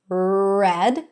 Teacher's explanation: The tongue is not touching anything. Not in the front and not in the back. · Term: R sound